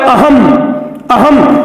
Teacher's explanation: तो अ के पीछे म की ध्वनि आ रही है, इसलिए अनुस्वार है।